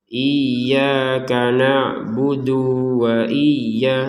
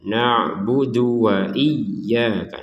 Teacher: dal dhammah ini langsung ke wawu, jangan dikesankan berpisah